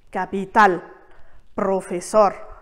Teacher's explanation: c'est la dernière syllabe qui portera l'accent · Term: accent tonique